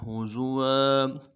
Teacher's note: واو کے اوپر تنوین ہے، غنہ کریں گے. وقف کی صورت میں تنوین کو الف سے بدلیں گے